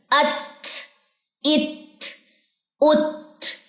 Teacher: पहले शिद्दत डालिए, अत, इत, उत, यानी कि अपनी आवाज को बंद करें, शिद्दत उसी को कहते हैं ना। अब इसमें हम्स डालिए, अत, इत, उत, सांस जारी करिए